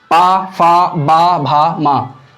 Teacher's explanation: और ओष्ठ, पा फा बा भा मा, ये जो ओष्ठ हैं, इनको बोलते समय, इन वर्णों को बोलते समय हमारे होंठ आपस में जुड़ रहे हैं, पा फा बा भा मा, तो इनको उच्चारण करते समय जो ओष्ठ हैं वो जुड़ रहे हैं।